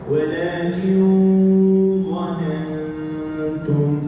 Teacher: Satu dengung yang tebal, satu dengung yang nipis. Satu bertemu d, satu bertemu ta. Jadi adjustment lidah tu berbeza. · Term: ikhfa